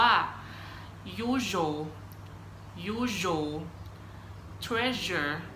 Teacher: ตอนนี้จะเป็นเสียงVoiceนะคะจะมีการสั่นของเส้นเสียงนะครับ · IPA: /ʒ/